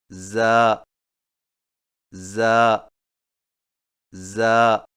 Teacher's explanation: زا کی ادائیگی میں زبان کی نوک کو سامنے والے نیچے کے دو دانتوں کے کناروں سے مضبوطی سے لگا کر باریک اور سیٹی جیسی آواز میں پڑھیں